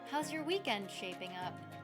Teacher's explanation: This question does not require a yes or no answer, so I drop the pitch of my voice at the end.